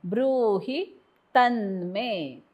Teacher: त वरती आघात कारण पुढे जोडाक्षर